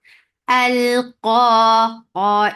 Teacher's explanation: Qa is 2 counts long, and it is heavy.